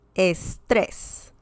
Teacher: the word ends in s and there's some stress on the last syllable